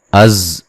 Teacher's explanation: जा को ज़ोर से सख्ती से सीटी की आवाज़ के साथ जा को अदा करेंगे